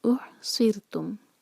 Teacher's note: را ساکن سے پہلے کسرہ ہے تو وہ باریک پڑھا جائے گا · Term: را باریک